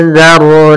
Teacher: Yaitu kita menyamarkan suara nunnya kepada huruf zal, atau suara nunnya disamarkan ke zal, sehingga bukan lagi anzarna, tidak dibaca dengan jelas sebagaimana izhar, atau tidak dihilangkan sebagaimana idgham, sehingga kita menyamarkan di antara keduanya. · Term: ikhfa hakiki